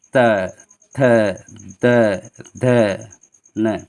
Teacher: त वर्ग में आपका जितने भी अक्षर हैं वो सब दांत से निकालते हैं। बोलिए त, आप देखिए त जब बोलेंगे तो आपकी जीभ जो है, बोल कर देखिए, आपकी जीभ जो है दांत से टच करती है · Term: दंत ध्वनियाँ